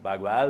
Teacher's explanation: em algumas regiões da Fronteira puxam muito mais o l por razão do espanhol